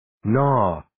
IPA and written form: nɔː (Gnaw)